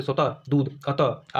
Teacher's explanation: विसर्ग है यह व्यंजन है और इसका उच्चारण ह की तरह होता है